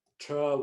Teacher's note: English taxi borrowed as t with a unaspirated retroflex t because Marathi does not have an alveolar stop